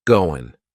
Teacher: That final G in the word going is going to be cut off, and we'll just say, going.